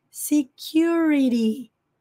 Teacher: No inglês americano, T entre os sons de vogais tem som de R.